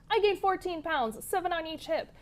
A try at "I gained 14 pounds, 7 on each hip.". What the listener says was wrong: And your voice went up a little bit, and you lost the New York accent. But this is there. It was there the whole scene, and I want you to find that.